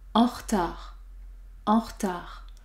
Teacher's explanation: on peut supprimer le E du mot retard car il y a une seule consonne prononcée devant R. R. On peut donc dire en retard, en retard.